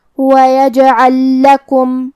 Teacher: کلمت لکم، تو یہاں بھی حکم ہے ادغام، ہم پہلے لام کو دوسرے لام میں ملا کے ایک ہی لام پڑھیں گے تشدید کے ساتھ